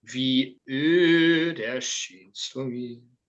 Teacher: There's a glottal stop I need, which you're not doing.